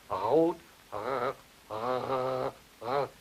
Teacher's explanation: speakers of German, when they say the word for red, rot, I'm not very good at that, but that is a velar trill.